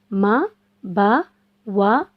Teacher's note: मा होठों के बाहर वाले हिस्से से अदा होता है। जब हम होठों के बाहर वाले हिस्से को मिलाकर छोड़ते हैं तो मा अदा होता है · हम होठों के तर वाले हिस्से को मिलाकर छोड़ते हैं तो बा अदा होता है · वा होठों को गोल करके, जब हम होठों को गोल करके छोड़ते हैं तो वा अदा होता है। यानी होठों के दरमियान वाले हिस्से से वा अदा होता है।